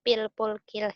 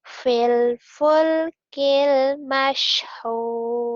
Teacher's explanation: Jadi fa-nya itu ada keluar nafasnya ya, biar nggak tidak ke P.